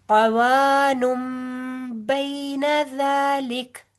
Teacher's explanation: नून तनवीन के बाद आगे बा आ रहा है, लिहाजा यहाँ पर इकलाब का कायदा हो रहा है। ठीक है, कि हम तनवीन की नून की आवाज को मीम के साथ बदल देंगे